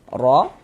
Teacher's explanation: huruf ro dibaca tabkhim, dibaca tebal, sehingga dengan menaikkan pangkal lidah kita ketika kita mengucapkannya.